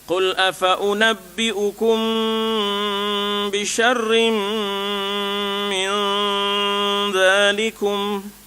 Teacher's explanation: mim mati berjumpa dengan ba ya, kita ada ikhfa ya. Maknanya kena dengung di situ. Kemudian tanwin pula syarrim ya, dengung lagi di situ ya tak?